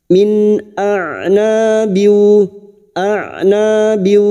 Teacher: maka bunyi nun sukun dibaca jelas tanpa mendengung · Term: izhar halq